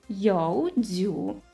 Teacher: second tone is a rising one